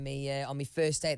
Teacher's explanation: he says me instead of my